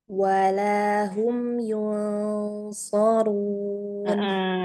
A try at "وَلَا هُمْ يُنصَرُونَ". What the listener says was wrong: Iya, tapi jangan kelamaan ya yuknya yun so langsung tarik.